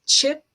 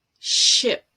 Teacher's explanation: you stop the airflow and then you release it to a sh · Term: affricate